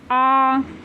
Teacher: विवृत स्वर मुख द्वार बिल्कुल खुला रहेगा, जैसे बड़ा आ।